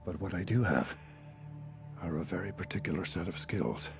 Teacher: He has a very deep voice with vocal fry